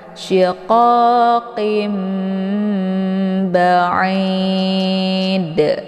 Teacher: Nah, untuk ini dipanjangkan dulu ya karena ada mad arid lis sukun, kemudian baru dipantulkan ujungnya yaitu huruf dal ya. Ba'id ya, ada bunyi de-nya. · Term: pantulan kuat